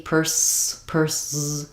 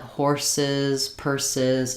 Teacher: it's typically going to be an S sound followed by an I and a Z sound